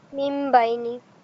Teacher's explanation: কেননা এটা এখানে ইকলাব হচ্ছে, চেঞ্জ হয়ে যাচ্ছে। নুন সাকিনটা বা আসার কারণে নুন সাকিন আর নুন সাকিন থাকে না, এটা মিম সাকিন হয়ে যায়। এবং এটা বোঝার জন্য ছোট্ট করে একটা মিম এখানে দেয়া থাকে।